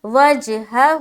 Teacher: اب دیکھیں یہاں پر دو ہا ہے نا، دونوں ایک ہی ہا ہے، ٹھیک ہے، لیکن فرق کیا ہے کہ ایک ہا کے اوپر زبر ہے تو جلد ادا کریں گے اور دوسرے کے اوپر الٹا پیش ہے تو اسے کھینچ کر پڑھیں گے، کیونکہ الٹا پیش کس کے برابر ہوتا ہے، واو مدہ کے برابر ہوتا ہے، یعنی کہ جس طریقے سے واو مدہ کو پڑھتے ہیں اور جیسا آواز اس میں آتی ہے اسی طریقے سے الٹا پیش میں بھی آئے گا، تو اسے بھی کھینچ کر پڑھیں گے۔